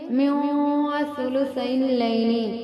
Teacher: من ثلثی اللیل میں نون ساکن کے بعد سا حروف اخفا میں سے اخفا کا قاعدہ ہے، پڑھیں گے من ثلثی اللیل۔